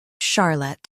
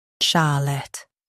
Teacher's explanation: In US, stress Shar. In UK, stress Sha.